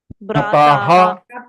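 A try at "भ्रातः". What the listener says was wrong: So that is not right, na? You are saying Bhrata. So if you add Visarga, Bhrataha, ya Bhrataha, means brothers, you are showing only one person, you are saying brothers. How it is possible?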